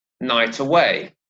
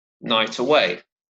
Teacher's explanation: there's a liaison here, right? Again, consonant sound at the end of night and vowel sound at the beginning of away. So it's night away.